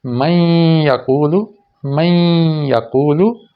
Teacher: یہاں نون کی آواز آئے گی بھی ناک سے، اور اگلے حرف پہ شدت بھی آ جائے گی۔ میں یقول، میں یقول، تو نون کی آواز یا میں مدغم ہو رہی ہے۔